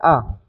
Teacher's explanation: आ चा उच्चार करताना आपलं तोंड उघड राहतंय ठीक आहे आणि आवाज आहे तो पूर्णपणे कंठातून येतोय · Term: कंठे स्वर